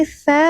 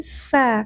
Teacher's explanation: Tsa ujung lidahnya sedikit keluar